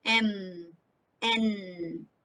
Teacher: through the nose speech sound just as m and n and produced with the vocal folds vibrating air going on through your nose